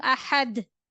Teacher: in stop condition, dal will read with bounce sound